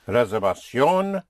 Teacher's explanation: the V pronounced with your lips like a soft B